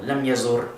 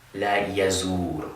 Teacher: with a short vowel, lam yazur, instead of la yazur with that long waw